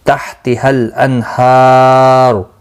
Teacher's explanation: ہا کو کھینچنا ہے 1 الف کی مقدار کے برابر، اور پر پڑھا جائے گا پیش کی وجہ سے